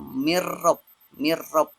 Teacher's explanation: Nunnya tidak dibaca di sana, disamar-samarkan langsung kepada huruf ro-nya. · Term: idgham bila gunnah